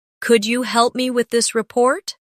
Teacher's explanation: The words help and report carry more weight in the sentence. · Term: stress